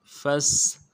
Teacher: سے ادا کرنا ہے، فا کو سین کے ساتھ ملانا ہے، سین سیٹی والا حرف باریک کریں گے